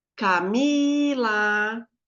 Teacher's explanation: Sei lá. Camila, o mi é mais forte, paroxítona, porque é a penúltima